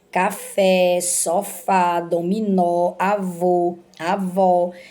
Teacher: a sílaba mais forte dessa palavra a última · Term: oxítonas